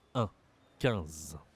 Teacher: Je sais que IN, c'est souvent IN dans d'autres langues, mais en français, on utilise le nez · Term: voyelle nasale